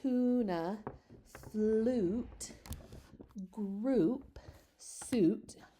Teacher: You guys can hear that pure oo.